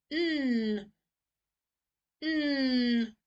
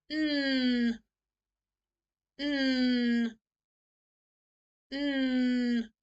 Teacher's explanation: My tongue is right up to the top of my mouth there